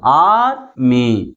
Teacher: First syllable is pronounced with greater force comparing with second syllable.